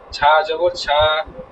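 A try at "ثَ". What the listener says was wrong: ছা না, সা জবর সা,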